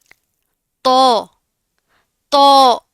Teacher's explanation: تا، دال اور تو تینوں کا سیم مخرج ہے، یعنی زبان کی نوک اور اوپر والے سامنے کے دو دانتوں کی جڑوں سے لگے گی تو ادا ہوگا. اس کی آواز کو ناک میں نہیں لے کر جانا آپ نے، اس کو موٹا پڑھنا ہے، ٹھیک ہے؟ اس کو باریک نہیں پڑھنا.